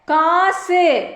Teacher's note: இந்த 6 வல்லின உகரங்களும் இறுதியில் வரும்போது ஒரு மாத்திரைக்கு பதிலாக அரை மாத்திரை அளவே ஒலிக்கும் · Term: குற்றிய லுகரம்